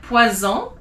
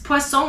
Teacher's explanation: If it's one S in the middle of a word like poison, it's a Z.